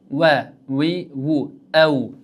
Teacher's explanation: Chunki o'zbek tilidagi v harfi tepatish pastki labga tegishli bilan chiqadi. Lekin arab tilidagi vav harfi ikki lab yumaloq holga keltirib oldinga chiqishlik bilan chiqyapti.